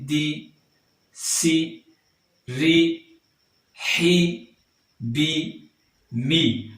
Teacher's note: آواز نیچے کو گرتی ہوئی محسوس ہوتی ہے، سیدھی جا کر نیچے کو گرتی ہے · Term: باریک